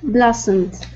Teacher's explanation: so that o is going to make an a sound